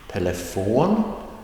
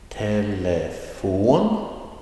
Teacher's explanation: Telefon, that is with the rising tone on the last syllable.